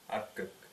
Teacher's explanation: Вторая передняя гласная влияет на согласную в первом слоге.